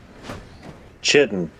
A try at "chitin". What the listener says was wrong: You see, the British English pronunciation for that is chitin. Because it comes from because I believe it does come from a Greek word where it's like a K sound.